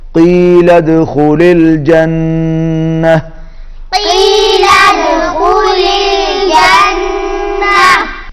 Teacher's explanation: دال پر قلقلہ ہوگا، قاف حلق میں سے ادا کریں گے، اور پھر نون پر تشدید ہے، یہاں پر غنہ ہوگا۔